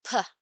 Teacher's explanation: The articulators involved are the lips, and there is no vibration of the vocal cords. So, this sound is described or named the voiceless bilabial plosive.